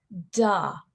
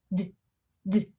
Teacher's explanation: Very little bit of voicing. My mouth is not opening at all when I pronounce that D sound.